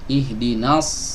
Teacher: dengan cara mengangkat lidah bagian belakang ya jadi ketika kita mengucapkan huruf shod lidah belakangnya enggak boleh rileks tapi dia meregang